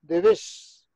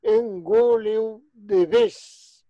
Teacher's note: E o Z final, mesmo aqueles que no galego medio e oriental pronuncian o Z do castellano, como final de palabra sempre é sibilante.